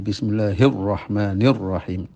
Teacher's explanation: Terus lamnya diidghamkan kepada ra menjadi bismillahirrahmanirrahim, menjadi mudah ya.